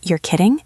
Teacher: If you go up at the end, you're kidding. It sounds like you are genuinely confused